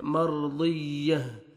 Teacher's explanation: रॉ साकिन से पहले फतह है, ज़बर है, आपने रॉ को पुर करना है